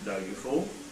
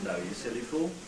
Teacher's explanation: The last syllable in the tail will rise.